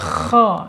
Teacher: harus sedikit ngorok ya, karena huruf kha ya. Tidak boleh ha, apalagi pakai ha ya.